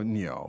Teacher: the tones there are second and fourth